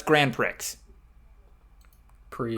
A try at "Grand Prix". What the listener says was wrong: The X is silent.